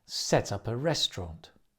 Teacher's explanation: the stress falling on the restaurant